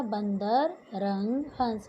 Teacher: अनुस्वर यानी अंग की मात्रा, जिसका उच्चारण नाक से होता है।